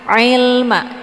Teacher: Kalau dibaca il, itu bacaan yang salah karena keluarnya dari jalur hidung. Sementara posisi yang tepat huruf ain ini adalah bagian tenggorokan tengah. Jadi lunak, ya.